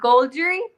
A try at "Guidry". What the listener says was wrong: No, it's not an L. It's an I. Guidry.